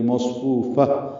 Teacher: فو واو مدہ ہے، فا کو تائے مربوطہ سے ملانا ہے، ہاں میں تبدیل ہو جائے گی مصفوفہ اور اس پہ سانس جاری رکھنی ہے پڑھتے ہوئے.